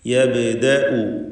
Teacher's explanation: ബാഇൻ്റെ സുക്കൂൻ ഖൽഖല സുഗ്റ നൽകി ഹറക്കത്ത് പോലെ വ്യക്തമാക്കി ശബ്ദം ചലിപ്പിച്ച് ഉച്ചരിക്കണം